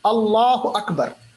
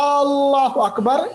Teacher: اللہ اکبر میں ہم نے جو حمزہ ہے اس کو لمبا نہیں کیا، مگر اللہ اکبر میں ہم نے حمزہ کو لمبا کیا